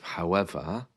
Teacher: notice the r again is missing there at the end end of however in receed pronunciation the letter R is not